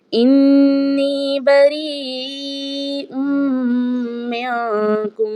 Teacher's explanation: नून साकिना के बाद काफ है, तो यहाँ पर इख्फा होगा, आवाज़ नाक के बांसे से अदा होगी · यहाँ पर इदगाम भी होगा और गुन्नाह भी किया जाएगा